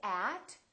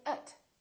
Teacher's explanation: the vowels inside those words can sound really short and they sound like uh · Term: reduce the little unimportant words